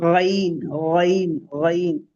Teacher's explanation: top part of the throat से ऊपर के पार्ट से निकलता है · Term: मखरज नंबर फोर